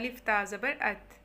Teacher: ठीक है, उसके बाद हम देखते हैं अलिफ ता ज़बर इसमें क्या है, पढ़ के देखिए, महसूस हो जाएगा कि ज़ुबान की नोक जो है वो दांतों की जड़ को टच कर रही है।